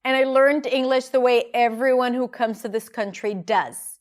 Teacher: The stress is on learned English comes country does.